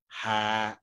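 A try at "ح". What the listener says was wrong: বা, হা, হা, আর একটু মুখ খুলবে।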